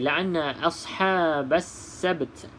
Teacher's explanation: Cuma kena sebut juga huruf ta, tetapi bukan sampai bunyi baris dia. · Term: hamas